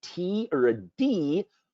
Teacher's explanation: we actually close off the airway with our tongue up at the front of our palate